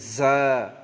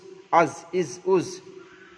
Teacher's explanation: জায়ের মাখরাজ জিভের আগা সামনের উপর এবং নিচের, সামনের উপর এবং নিচের দুই দাঁতের আগার সঙ্গে লাগিয়ে উঠতে হয় জা